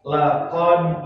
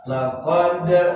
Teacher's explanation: Laqad dal sukun wajib dipantulkan di saat membunyikannya karena masuk pada hukum qalqalah. Laqad qalqalahnya qalqalah kecil, jangan ditahan, jangan baca begini laqad, salah.